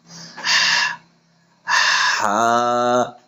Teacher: মধ্যখান অর্থাৎ কণ্ঠনালীর মধ্যখান হইতে উচ্চারণ করতে হবে।